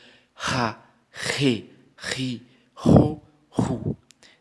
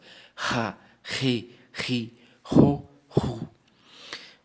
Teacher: como se eu estivesse colocando ra, re, ri, ro, ru, tentando sair o som da garganta e com mais força